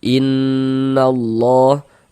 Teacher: Sebelum lafaz Allah sebelah sininya ada ini ada harakat fathah ada tanda baca fathah. Maka lafaz Allah huruf lam jalalahnya ini kita baca takhim. Kita baca tebal.